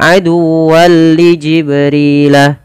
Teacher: idgham kamil, idgham yang masuk secara keseluruhan, tidak menyisihkan daripada nunnya.